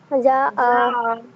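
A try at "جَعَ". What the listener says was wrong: যা না, ওটা হামজা হয়ে যাচ্ছে, আইন। যা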